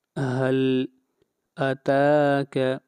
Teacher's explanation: تا کو کھینچ کر پڑھیں گے ایک الف کے برابر، تا کے اوپر مد اصلی ہے، کھڑی زبر ہے۔